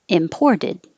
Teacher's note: now the t sounds like a d